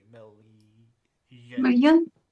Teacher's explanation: Slender L is like LY million.